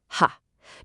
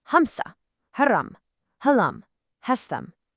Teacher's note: When you say ha, you should feel that little puff of air. · It's all about that airy, breathy quality. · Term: ha sound